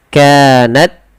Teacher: Yang pertama syiddahnya dulu baru hames. Syiddah itu tertahannya suara.